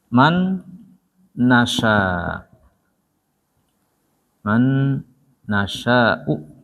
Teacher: nun dan mim, tanpa disuruh masuk hidung, udah ke situ dia mah.